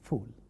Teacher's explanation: it is not bilabial because both the lips do not come closer to produce this thing. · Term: labiodental